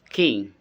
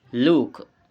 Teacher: The explanation ke is voiceless, velar, and plosive, made by blocking the back of the tongue against the soft palate and releasing air